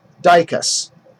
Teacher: It's not on the first part, it's on the second part. So the unstressed is di, and then the stressed is cus